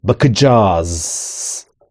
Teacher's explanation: Ayrıca kelimenin sonunu uzatmak da iticilik katar. Bakacağız. Z de S'ye dönüşüyor.